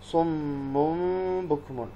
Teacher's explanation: تنوین ہے اور اس کے بعد حرف با آیا ہے تو یہاں پر ہم کیا کریں گے؟ اقلاب کریں گے